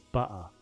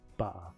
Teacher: I like the British accent, except the one where people swallow the T.